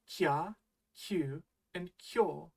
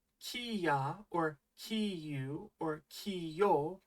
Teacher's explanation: In these cases, you sort of treat the small ya, yu, or yo like a slide that attaches to your first consonant